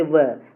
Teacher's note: ऊपर वाला दांत और नीचे वाला होठ टच हो रहा है, तो दंत ओष्ठ हो जाएगा